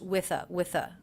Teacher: I pronounce the ending th unvoiced